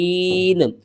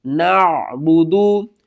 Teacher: عین کو آپ نے حلق کے درمیان والے حصے سے ادا کرنا ہے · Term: حروف حلقی